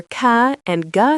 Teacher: the back of your tongue touches your soft palate, or velum, creating velar sounds.